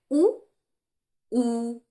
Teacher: ये ओष्ठ स्वर हो गए, क्योंकि ये ओंठ का प्रयोग हो रहा है